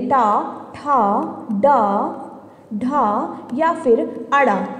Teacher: ट, ठ, ड, ढ या फिर अड़, कोई भी ध्वनि ले ले, ये सभी कैसी होती हैं? मूर्धन्य। अगर हमसे इनमें से चारों में से पांचों में से कोई भी अगर आपसे अलग अलग करके पूछा जा रहा है तो भी ये मूर्धन्य होंगे, और अगर कंबाइन करके पूछा जा रहा है तो भी ये मूर्धन्य होंगे, ठीक है?